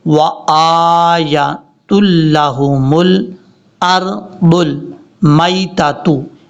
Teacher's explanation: یہاں پر کئی لوگ غلطی کرتے ہیں کہ حمزہ کے اوپر تو چلو کھڑا زبر ہے، ہم اس کو لانگ کر دیتے ہیں، لیکن حمزہ کے بعد جو یا ہے، یا کو لانگ کرنے کی، لمبا کرنے کی ضرورت نہیں ہے، کیونکہ یا کے اوپر صرف زبر ہے